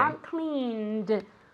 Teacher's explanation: aren't cleaned with a D sound, not a T sound